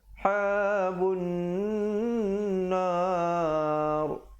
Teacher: Bun di situ wajib al-ghunnah. Wajib dengung di situ dua harakat.